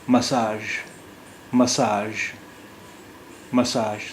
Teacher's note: اب ایک اور لفظ ہے انگریزی میں، ایک اور لفظ ہے جس میں ژ کی آواز ہے، مساج. مساج یہاں جی کی آواز ژ کی ہے، نکل رہی ہے